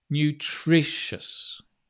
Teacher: Put the stress on the tri.